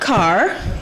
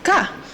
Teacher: in Grenadian, we tend to drop the R's. So C-A-R is not car, it's just ka, right?